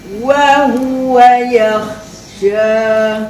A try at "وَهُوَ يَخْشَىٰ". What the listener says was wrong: Bagi panjang sikit lagi bunyi kha tu makcik kan. Bukan dekat kha tu kan. Wa huwa yakhsha.